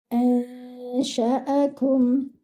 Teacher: Your kaf should be given one count. And your meme should be read without any qalqala, without bouncing